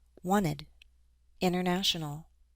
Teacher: We have NT followed by an unstressed vowel sound. So yes, I'll drop those T's.